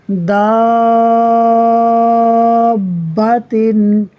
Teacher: الف مدہ کے بعد با کے اوپر تشدید ہے یعنی سکون اصلی ہے تو مد لازم ہوگا یعنی 6 حرکات کے برابر کھینچ کر پڑھیں گے